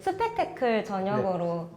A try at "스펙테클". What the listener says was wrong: 발음 잘하시는데 스펙타클 아니고 스펙테클입니다. 예, 이게 원 발음이고요.